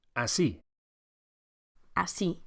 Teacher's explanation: make sure you accentuate the second syllable